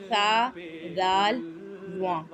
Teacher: तो ज़बान का जो सिरा है वो ऊपर के दांतों के अंदरूनी किनारे से अदा होते हैं। ठीक है, ज़बान का सिरा लगेगा ऊपर के दांतों के अंदरूनी किनारे में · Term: नरमी वाले हर्फ